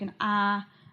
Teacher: you have the first tone, which is a sort of flat, almost like singing tone, like an ah.